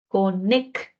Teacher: la C tiene valor oclusivo, por lo que es la K, y luego la X, como en taxi, tiene dos valores. KS